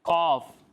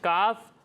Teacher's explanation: کاف اور قاف کی آواز ملتی جلتی ہے، ایک حرف ہے کاف اور دوسرا حرف ہے قاف۔ قاف جو ہے یہ حروف مستعلیہ میں سے ہے، جب آپ اس کی ادائیگی کریں گے تو اسے پر پڑھیں گے، موٹا کر کے پڑھیں گے، لیکن کاف کو ہم باریک پڑھیں گے